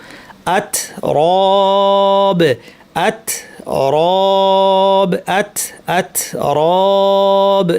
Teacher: এবারে বাউন্স না করে বাতাস বের করে দিতে হবে। আ আত বেশ শক্ত এবং একটু বাতাস কাফের মত